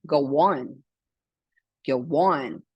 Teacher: Muitas vezes vai ter um som de U no meio para juntar essas duas palavras, ou até mesmo um som de I no meio. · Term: vowel plus vowel